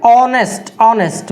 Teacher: ऑनेस्ट, ऑनेस्ट, vowel sound दे रहा है, ऑनेस्ट, ऑ से स्टार्ट हो रहा है, ऑनेस्ट, एच साइलेंट होता है इसमें